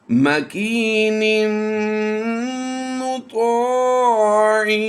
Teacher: تنوین کے بعد حروف یرملون میں سے میم آ گیا، تو یہاں پر ہم تنوین میں کیا کریں گے، ادغام مع الغنہ کرتے ہوئے غنہ کی آواز دیں گے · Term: غنہ آنی